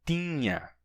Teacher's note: Mas no passado, a gente tem tinha, com nasalidade.